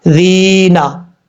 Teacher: یہاں پر یا مدہ ہے، ایک الف کی مقدار لمبا کر کے پڑھا جائے گا